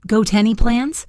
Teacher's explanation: The words got any can link together to sound like go tenny.